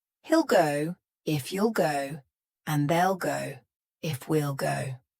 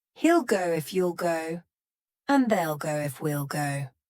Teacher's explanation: In each of these contractions, you heard that full pronoun. He, you, they, we.